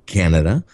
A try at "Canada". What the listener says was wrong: Canada. I think the emphasis is on a different syllable.